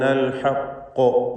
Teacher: കൂടെ ഖാഫിന് തഫ്ഖീമും വരണം. തടിപ്പിച്ച് സ്വരഭാരത്തോടെ ഖാഫ് ഉച്ചരിക്കണം.